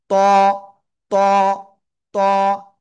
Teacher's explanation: জিহ্বার আগা উপরে দুই দাঁতের গোড়ায় লাগাবেন, লাগাবেন, ঠিক আছে? লাগিয়ে একটু মোটা আওয়াজে উচ্চারণ করব।